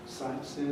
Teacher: you can use a rise which again indicates that there is something more to follow